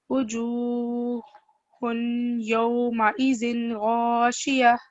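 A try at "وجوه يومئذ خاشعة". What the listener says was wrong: It's not غاشية, it's خاشية.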